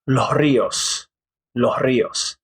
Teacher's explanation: the s will become like a h sound